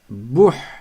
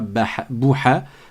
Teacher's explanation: Le ha a un soukoun, donc je m'arrête dessus et je ne mets pas de voyelle après. Je ne dis pas bouha, je ne dis pas bouhou et je ne dis pas bouhi.